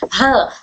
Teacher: ठीक ह भी हमारे हलक के निचले हिस्से से ही अदा होता है। ह पढ़ते वक्त में भी यहां पर वाइब्रेशन होती है। हमारे हलक के निचले हिस्से में